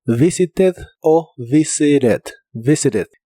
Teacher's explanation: En inglés americano la T de esta palabra también la puedes pronunciar como R, así que puedes decir visited o visited.